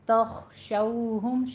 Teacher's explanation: کھول کے ادا کیجیے، 2 کاؤنٹ کرنا ہے اس کو، تخشو خو کو پر پڑھنا ہے اور اس میں تھوڑی سی ہمس کی آواز آئے گی ، ٹھیک ہے، تخشوہم، شو میں ہونٹوں کو ناتمام گول کرنا · شو میں ہونٹوں کو ناتمام گول کرنا ہے، واو لین ہے